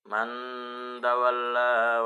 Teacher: Bacaan ikhfa di mana ada nun mati bertemu dengan huruf ta pada bacaan man tawalla